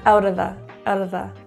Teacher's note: the word of reduces into uh literally just schwa